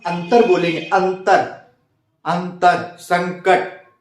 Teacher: जैसे अगर हम अंतर बोलेंगे, अंतर, अंतर, संकट, तो हवा नाक से निकलती है। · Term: अनुस्वर